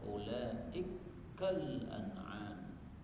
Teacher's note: kaf ketemu kaf boleh idgham